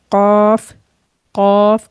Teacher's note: तो ये भी जो है हल्क, जो आपका जहाँ से आइन था उससे थोड़ा सा ऊपर आए, और जो हमारी ज़बान का लास्ट पार्ट है और जहाँ से गैन अदा होता है उसी के तकरीबन आसपास कॉफ का मखरज है